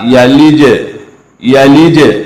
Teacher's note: जीम को थोड़ा सा, इसकी आवाज को मैं हिलाऊंगा, थोड़ा सा हिलाना, ज्यादा हिलाने से हरकत पैदा होती है। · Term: कलकला